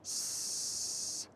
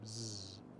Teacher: If you put your fingers on your vocal cords and you say the S sound, like you're a snake hissing, S, and then say the Z sound like you're falling asleep, Z, go back and forth between those, Z, your vocal cords vibrate when you make the Z sound, but not when you make the S sound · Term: voicing